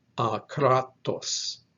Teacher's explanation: So it is akratos with a stress on that second syllable.